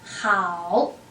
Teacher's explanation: So we have the initial h, and then we have the compound final, okay, the compound vowels, ao, and the third tone together.